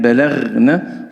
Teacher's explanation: لابد من مراعاة الرخاوة في حرف الغين · Pada kalimat balag ini diperhatikan pada huruf ghain yang disukun yang harus tetap menjaga sifat rokhawah.